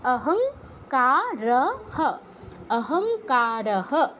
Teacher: তো ক তো ক বর্গের অন্তর্ভুক্ত ক বর্গের অনুনাসিক ধ্বনি কি ছিল ক খ গ ঘ তো অনুসারের জায়গায় গ হসন্ত যুক্ত করতে হবে তো হসন্ত বাংলা অনুসারের মতই উচ্চারণ আহং অহং অহংকার বিসর্গ সবার শেষে আছে তাই বিসর্গের জায়গায় হ আসবে